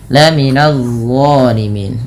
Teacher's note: Nah, ini dha jangan dibaca laminaz zalimin, tapi dia dha, pangkal lidah terangkat, ujung lidah menempel dengan gigi sari atas. · Idzal laminadh zalimin, idzal ada bacaan idgham bila gunnah yang dimana bunyi tanwinnya dimasukkan langsung ke huruf lam. Nah, idgham bila gunnah juga dikenal dengan idgham kamil, idgham yang sempurna sehingga masuk secara utuh dan tidak meninggalkan bunyi tanwin atau suara nunnya.